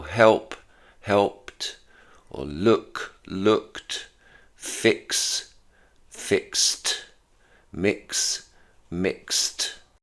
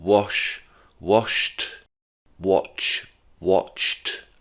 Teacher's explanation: they're the seven sounds at the end of the verb that make the t sound with the ed pronunciation